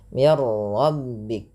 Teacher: Dan di sini juga idgham kamil, nunnya hilang secara utuh karena langsung ke huruf ra, dan ra dibaca dengan tebal. Hati-hati dalam melafalkan ra, tidak dibaca dengan mir rabbik, jangan banyak sekali takrir pada huruf ra, tapi sekali saja mir rabbik.